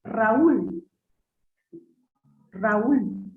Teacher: Hiato de vocal cerrada es aquel que está conformado por una vocal abierta más una cerrada, o viceversa, puede ser una vocal cerrada más una abierta, pero donde la mayor energía articulatoria o acento de voz recae en la vocal cerrada